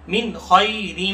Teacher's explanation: من پر اظہار کیا جائے گا، ان ساکن کے بعد خا ہے جو کہ حروف حلقی میں سے ہے